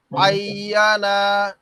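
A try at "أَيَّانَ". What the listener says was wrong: ভাই টান দেন না আই ইয়া টান দেন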